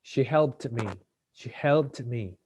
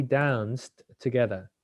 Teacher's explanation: voiceless sound or unvoiced with no vibration, pronunciation will be like a T